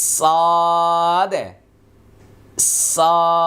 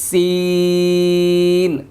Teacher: সটটা মোটা হবে, সিনটা পাতলা হবে, মানে সদের বাতাসটাকে চাপ দিয়ে ভিতরে ধরে রাখতে হবে আর সিন একটা ছেড়ে দিতে হবে।